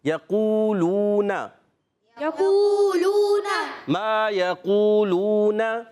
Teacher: دونوں واو مدہ ہیں تو دونوں کو ایک ایک الف کھینچنا ہے. اور قاف کو موٹا بھی رکھنا ہے، قاف حروف مستعلیہ میں سے، قاف کا مخرج زبان کی جڑ تعلقات نرم حصہ ہے.